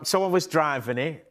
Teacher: So where words end with a t like in it and also later in the word bit, you'll notice the t isn't pronounced. It's glottalized. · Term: glottle t